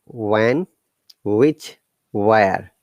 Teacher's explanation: all the h should be silent